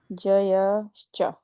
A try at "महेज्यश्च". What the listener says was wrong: जयश्च नहीं, आधा ज है इसलिए जश्च।